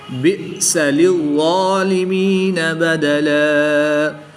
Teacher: حمزہ ساکن ہے، اس کو ہمیشہ جھٹکا دے کر پڑھتے ہیں